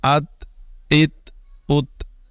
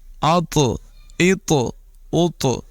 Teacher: جو نقطوں والا تا ہے اس کی آواز باریک ہے اور اس میں قلقلہ نہیں ہے، یعنی ہم اس کو ات ات ات نہیں پڑھ رہے۔